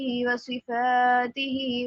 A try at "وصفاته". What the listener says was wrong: ألف مدة only 1 second long.